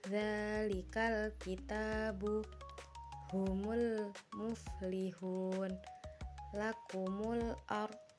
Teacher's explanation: Ayat-ayat di atas bisa dikategorikan sebagai huruf alif lam qamariah karena huruf sebelum alif lam dan huruf setelah alif lam sama-sama dibaca jelas